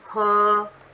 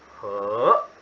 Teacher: drink is he, first tone, high flat